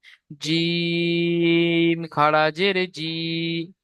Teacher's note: এখানে জিমটা বলার সময় একটু তিন আলিফ টান দিয়ে বলবেন